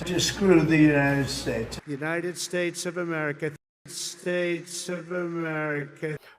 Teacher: So this is a pattern with a low fall at the end, a downstepped fall at the end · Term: Thatcher downstep